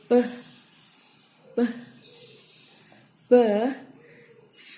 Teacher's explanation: Voice, place of articulation bilabial and manner of articulation plosive.